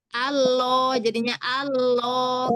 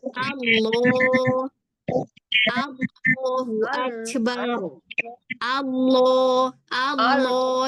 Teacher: Malah dia ee ketarik ke dalam. Nah, jadi Allah yang jadiin dia tebal pangkal lidahnya naik.